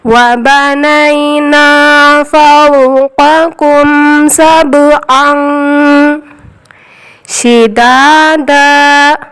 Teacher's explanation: تنوین کے بعد حروف اخفا شین آیا تو نون کی آواز کو ناک میں چھپائیں گے اور ایک الف کے برابر گھمانا ہے